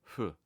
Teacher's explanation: Japanese F is pronounced with your two lips or bilabi as opposed to English F which is made by putting your top teeth on your bottom lip or labio dentally.